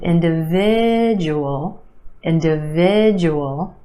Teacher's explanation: 5 syllables in this word. Emphasis on the third syllable